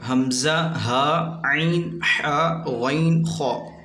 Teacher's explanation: حروف حلقی ورڈ حمزہ ہا عین حا غین خا، یہ ورڈ حلق سے ادا ہوتے ہیں تو انہیں حروف حلقی کہتے ہیں